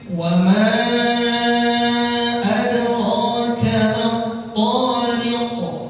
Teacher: Tariq ada qaf lagi di akhir. Nanti qalqalah kubra.